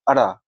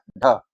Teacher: अड़, देख रहे हैं, एकदम तेजी से जीव क्या है ना उसको छूता है और नीचे आ जाता है, अड़ ढ, तो बहुत तेजी से जीव आपको उस तालु के पिछले भाग को छूता है और बहुत तेजी से नीचे आ जाता है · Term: मूर्धन्य ध्वनिया